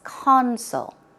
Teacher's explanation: often say corn soy corn soy ok the pronunciation is console the stress goes on the first syllable